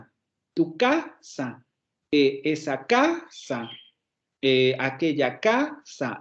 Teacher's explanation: vean como todas estas palabras de pronto dejan de tener acento